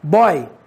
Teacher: Observe que boy nós temos o Y com som de I. Observe que o O tem um timbre aberto.